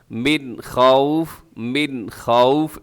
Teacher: من خوف نون ساکن کے بعد خا ہے تو یہاں اظہار حلقی ہوگا